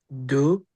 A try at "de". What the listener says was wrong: No. De. You're saying do, and I'm saying de.